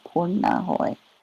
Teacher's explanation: there's one of those retroflex N's